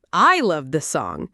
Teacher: you're emphasizing that it's you who loves the song, maybe in contrast to someone else. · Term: stress